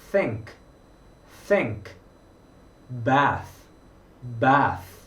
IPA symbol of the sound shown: θ